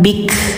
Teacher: Ujungnya ada angin bik. Karena kaf sifatnya hames, jadi dialirkan nafasnya ya